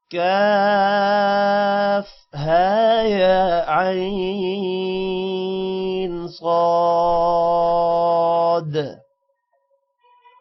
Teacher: کاف کے اوپر مد ہے، ہا کے اوپر کھڑی زبر ہے، یا کے اوپر بھی کھڑی زبر ہے، عین کے اوپر بھی مد ہے، صاد کے اوپر بھی مد ہے. مد 5 سیکنڈ لمبا ہوگی اور کھڑی زبر 1 سیکنڈ